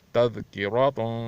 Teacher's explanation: इसका कानून मैंने आपको बताया था, रा मुतहरिक हो यानी हरकत वाली हो, ज़बर ज़ेर पेश वाली हो तो ज़बर और पेश पर रा को मोटा पढ़ा जाएगा और ज़ेर हो तो पतला पढ़ा जाएगा। क्योंकि यहाँ पे रा पर ज़बर है इसलिए इसको मोटा पढ़ा जाएगा।